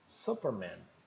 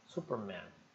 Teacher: a boca mais aberta e e a garganta mais espremida né mais apertada